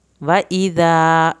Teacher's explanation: व इज़ा ज़ाल के साथ अलिफ है, इसको पतला नरम भी पढ़ना है और अलिफ भी पढ़नी है।